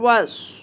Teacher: واو صاد زبر was صاد is exactly like سین لیکن اس کو ہم پر کر کے پڑھتے ہیں موٹا کر کے ہیوی بناتے ہیں